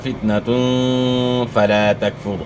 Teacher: 2 پیش کی تنوین کے بعد اخفاء کے 15 حروف میں سے فا ہے، تو یہاں غنہ اخفاء کے ساتھ ہوگا